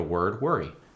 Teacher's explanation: In standard American English, we got the OR sound. But when we say words, it just sounds like ER. For instance, worry in word.